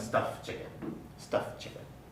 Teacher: Basically, there's too many consonants together, so the weak alveolar stop undergoes deletion.